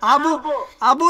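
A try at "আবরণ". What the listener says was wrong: Okay. So make it bo, not boo, okay? Abo.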